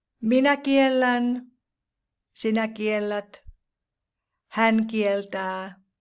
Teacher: another consonant combination with the consonant T is LT, where T changes into L, as in the verb to deny or to forbid, which is kieltää in Finnish.